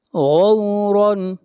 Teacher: ماؤکم، ما کے اوپر مد متصل ہے، اس مد کو 3 الف کے برابر کھینچ کر پڑھا جائے گا۔ غورن، غین کو موٹا پڑھا جائے گا اس لیے کہ غین حروف مستعلیہ میں سے ہے